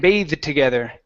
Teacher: has the e at the end it is a verb and you have to pronounce a long a and a voiced th and the voiced th is when you feel the vibration in your throat